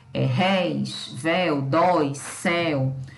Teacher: nós temos os monossílabos tônicos formados por ditongos abertos